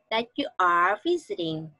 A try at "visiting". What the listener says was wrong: Visiting là y ngắn mà, đâu có nghiêng cái miệng vậy. Visiting. How y ngắn em đang đọc thành y tiếng Việt visiting, em đang đọc bên này visiting. Nó là visiting.